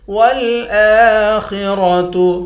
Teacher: خا اور را دونوں کو موٹا پڑھیں گے۔ والآخرة خیر وأبقى، خا کو بھی موٹا پڑھیں گے، را کو بھی موٹا پڑھیں گے، را کو واو کے ساتھ ملا کر واو پر غنہ کریں گے۔